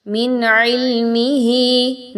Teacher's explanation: نون ساکن کے بعد عین آ گیا، اظہار کیا جائے گا، بہت کلیئرلی نون کی آواز کو پڑھنا ہے، غنہ نہیں کرنا